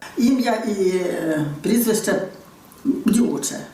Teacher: така риса як тверде ч характерна не тільки для центру України